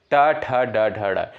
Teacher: ट ठ ड ढ ड ये सभी जो है मूर्धा से उच्चारित होने वाले वर्ड होते हैं। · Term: मूर्धन्य वर्ड